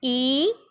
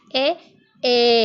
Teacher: the lips are spread when you say e and open and neutral when you say a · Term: unrounded vowels